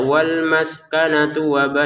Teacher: kalau tun nyambung ke wau jangan ada panjang.